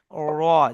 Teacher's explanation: জিহ্বার আগার উল্টা পিঠ উপরের তালুর সঙ্গে লাগিয়ে র উচ্চারিত হবে। দেখেন, জিভের আগাটা আপনি উপরের তালুতে লাগাবেন, উল্টে লাগাবেন র হবে।